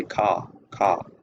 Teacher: say car car so as we can here uh the r the final R is not pronounced so that's just one of the character istics of the New Yorker accent · So as we can hear, the final R is not pronounced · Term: non-rhoticity